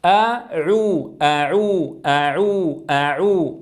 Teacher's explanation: اذا لابد من فتح الفم عند الهمزه ثم اضم الشفتين عند العين المضمومه